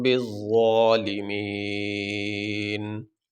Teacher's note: تو وقف کرنے کی صورت میں آخری حرف کو ساکن پڑھا جاتا ہے، یہاں پہ آخری حرف ہے نون، اس کے اوپر ہے زبر، تو وقف کرنے کی صورت میں نون کے اوپر جو زبر ہے اس کو نہیں پڑھیں گے، نون کو ساکن پڑھیں گے